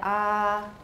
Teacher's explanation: the air is pushing up it's going through the vocal folds they're opening snapping shut opening snapping shut